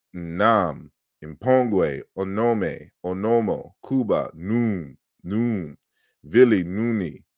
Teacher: So then you have an N series where the first initial R is nasalized and becomes N